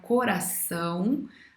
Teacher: a palavra coração, a mais forte é o são. Então, ela não é acentuada, porque a mais forte é o ão. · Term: oxítona